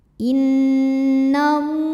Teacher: ada baris fathah tegak di atas huruf lam cara membacanya dipanjangkan lamnya dua harakat